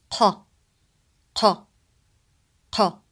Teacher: قاف sound, it's not ka, it's ق. It's deeper than the English K sound, ka in Arabic.